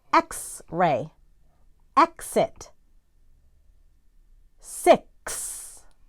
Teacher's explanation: producing a k and an s sound together